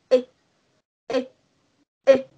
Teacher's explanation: Thì âm y ngắn này mình sẽ không cái miệng của mình nhá. Miệng của mình sẽ không căng như là âm y dài